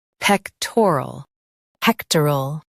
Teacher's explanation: pec t rol pectoral pec t rol pectoral Focus on pec and soften tor and al.